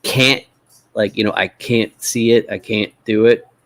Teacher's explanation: sometimes our T's in the middles they just turn into what linguists call a glottal stop